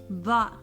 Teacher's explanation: The manner of pronouncing that is done by the tip of the tongue touching the upper back teeth. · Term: Dhad